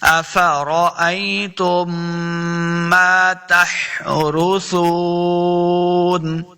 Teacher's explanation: افرأیتم ما تحرثون، را کو اوپر پڑھنا ہے، سا پیش واو، سو واو مد ہے، سا کو نرمی کے ساتھ پڑھیں گے، سیٹی کی آواز نہیں آنی چاہیے. تحرثون وقف کریں گے، آخر پہ نون ساکن ہو جائے گا.